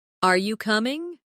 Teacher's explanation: when you ask a yes or no question, your voice usually rises at the end. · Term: intonation